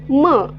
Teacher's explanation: म अल्पप्राण आहे अनुनासिक आहे आणि कसा आहे ओष्ठवर्ण आहे